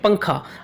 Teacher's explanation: وہ کہتے ہیں تنوین یا نون ساکن کے بعد حروف اخفاء میں سے کوئی حرف آ جائے تو نون کی آواز کو ناک میں چھپا کر پڑھنا چاہیے